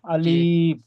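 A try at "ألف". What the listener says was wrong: জি ঠিক আছে, আলিফটা টান হবে না, আলিফটা জলদি পড়তে হবে, যেমন আলিফ।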